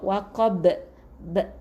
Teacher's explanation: matikan dengan qalqalah yang nyaring, qalqalah kubra, waqab, b. Okey, yang tu qalqalah yang nyaring.